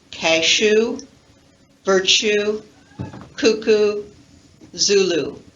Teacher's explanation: it's very much like the stressed ooh but it's not stressed you can hear a little bit of a difference in vowel quality